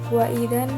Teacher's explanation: yaitu gunah musyadadah cara membacanya berdengung